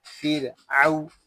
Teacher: عین واو زبر او، پھر او، اس کو پھر او ایسے نہیں پڑھیں گے، حرف لین کو بغیر کھینچے بغیر جھٹکا دیے نرمی سے معروف پڑھتے ہیں